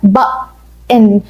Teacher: ثالث نوع من انواع النطق اللي بنقول بيها حرف تي اسمه glottal تي. الجلوتال تي دي هقولها لكم في اللغة العربية زي بالظبط صوت الهمزة